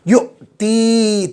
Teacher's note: حمزہ پر جزم آئے تو حمزہ کو جھٹکے کے ساتھ پڑھیں گے